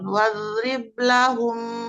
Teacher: mim bertemu mim idgam mimi menahan dengungan tiga harakat